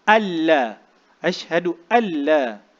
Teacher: Tanpa kita gunnah. Maknanya terus masuk. Tak sebut huruf nun tu, tak sebut. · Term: idgham